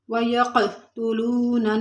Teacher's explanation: اب یہاں پر واو مدہ ہے، تھوڑا سا کھینچیں گے، اور یہاں پر قاف ساکن ہے تو وہاں قلقلہ کریں گے